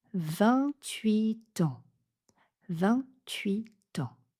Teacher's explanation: quand 28 et suivi d'un mot qui commence par une voyelle, on enchaîne avec le T